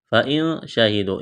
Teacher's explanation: اخفا کریں گے، نون ساکن کے بعد شین ہے